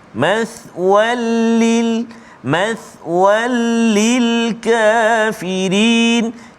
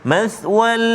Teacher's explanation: masukkan bunyi tanwin itu ke dalam lam tanpa dengung, tak boleh dengung. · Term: Idgham bila ghunnah